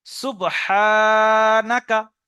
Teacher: হাটা একালিপ টান দিতে হবে, বাকি কোনো জায়গায় টান নেই